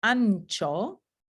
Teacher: para pronunciar la palabra ancho, la lengua se mueve, el ápice de la lengua se mueve un poco más hacia atrás. No es alveolar como el fonema, es prepalatal, se mueve un poco posterior.